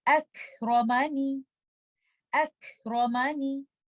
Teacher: Letter कैफ के ऊपर सुकून है तो आप हम्स के साथ पढ़ेंगे और हमजा को आप लाइट पढ़ेंगे, लेटर रॉ को आप हैवी करेंगे और आप इस तरह से पढ़ेंगे अक रोमानी अक रोमानी।